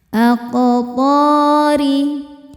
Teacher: Huruf qaf hukumnya adalah qalqalah sughra sebab qaf sukunnya sukun asli dan ada di tengah bacaan. Cara bacanya dipantulkan dengan pantulan yang kecil.